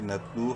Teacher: ہی آیات اللہ نون تا زبر نت لام واو پیش لو واو مدہ ہے لام کو ایک الف برابر لمبا کریں گے · کو ایک الف برابر لمبا کریں گے نتلو ہا الف زبر ہا الف مدہ ہے ہا کو بھی ایک الف کے برابر لمبا کریں گے